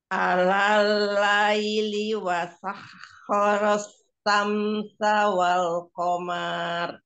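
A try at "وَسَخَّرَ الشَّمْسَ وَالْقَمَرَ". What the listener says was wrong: Wal qamar nggak panjang ya, wal qamar saja, tidak wal qamar, tidak. Iya, sekali lagi, wasakhkhara asy-syamsa wal qamar.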